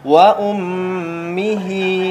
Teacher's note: Wa ummihi wa abi. Ada tasydid, maka tekankan kepada huruf mim gunnah. Tahan.